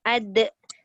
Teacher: De tu mesti dilantunkan dengan suara. Dia tak cukup sekadar lantunan angin. Kalau lantunan angin tu salah. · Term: qalqalah